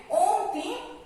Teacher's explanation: हर्ष स्वर को बोलने में बहुत कम समय लगता है, दीर्घ स्वर को बोलने में उससे थोड़ा अधिक समय लगता है, और प्लुत स्वरों को बोलने में उससे मतलब 3 गुना अधिक समय लगता है